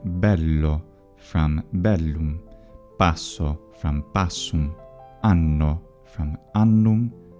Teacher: Italian retains from Latin geminated consonants